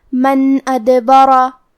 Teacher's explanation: الف حروف الاظہار میں سے ہے تو ہم نون ساکن کو ظاہر کریں گے اور بغیر غنہ سے یہ حکم کو ادا کریں گے